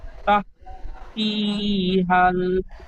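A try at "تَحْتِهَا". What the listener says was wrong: তাহতি বলে টান দিচ্ছেন, তার নিচে জের আছে, টান হবে না। তাহতি হাল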